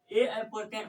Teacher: ए आपका हो जाता है कंठ और तालु दोनों मिलकर इनका उच्चारण स्थान होता है। जब हम लोग ए पढ़ते हैं तो कंठ और तालु दोनों से उनका आवाज निकलता है।